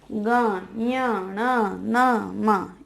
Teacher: अब हर वर्ग का जो 5वां अक्षर है, ये नासिक्य होता है, नासिका से बोले जाते हैं ये वर्ण। मुंह का तो प्रयोग होता ही है, मुंह का तो प्रयोग होता ही है, साथ में नाक को भी आप इसमें यूज करेंगे।